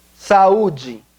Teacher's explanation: Notice that the U is stressed and the acute accent is on it.